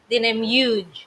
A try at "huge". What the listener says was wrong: Huge, honey. And because you don't pronounce the H in the Philippines. It's huge. Huge.